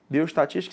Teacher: Qual é a sílaba tônica aí? É o tis, né? Então eu tenho uma palavra aqui que é proparoxítona.